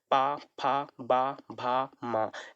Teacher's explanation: इसका उच्चारण स्थान ओष्ठ है, इसको ओष्ठ की सहायता से बोलते हैं या फिर होठ की सहायता से बोलते हैं।